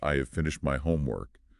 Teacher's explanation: we tend to stress the most important content words. So finished and homework.